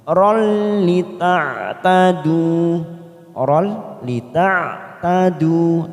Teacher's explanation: tanwin fathatain bertemu dengan huruf lam yang bertasdid warna oren, namanya idgham bila gunnah, hanya masuk tanpa ditekan lama-lama. Oral lita'tadu, oral lita'tadu, 2 harokat kita panjangkan.